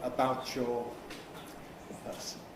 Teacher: coalescent assimilation, about plus your